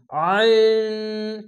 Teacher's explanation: আইন, এরকম আইন, 3 আলিফ টেনে পড়তে হবে। আইনটিকে গলা চিপে একটু মোটা করে পড়তে হবে।